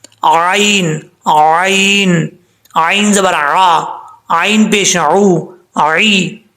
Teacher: آئین کو پڑھتے وقت آپ نے اس چیز کا خاص خیال رکھنا ہے کہ کہیں حمزہ کی آواز نہ نکلے